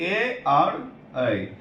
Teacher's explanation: ए और ऐ इस दोनों का उच्चारण स्थान क्या है भाई कंठ तालू कंठ और तालू मतलब कि इसके उच्चारण